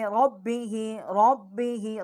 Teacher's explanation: را کو ہم منہ پر کر کے پڑھیں گے، اور با جو ہے ہونٹوں کو طریقے سے نکالیں گے